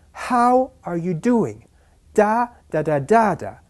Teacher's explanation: 5 syllables stressed on the first and the last.